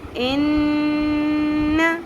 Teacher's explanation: ناک میں آواز ٹھہرائیں گے، کھینچیں گے آواز کو